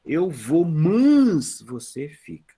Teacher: No Rio Grande do Sul, é comum você ouvir a palavra mans, que é o mas.